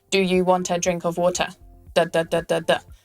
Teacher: Very flat and not flowing. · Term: like a robot